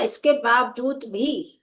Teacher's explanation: भा को हमने बोला इसके बावजूद भी तो बलाघात हमारा किस पे हुआ? भा पर बलाघात हुआ।